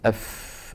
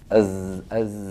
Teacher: هذه الزاي ما فيها هواء كالفاء وايضا فيها ايه اهتزاز